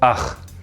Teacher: in some dialects you only hear the velar fricative, ach. In others, you sometimes hear the velar fricative ach and sometimes the uvular fricative ach.